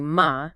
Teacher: a high-level tone gives you ma, meaning mother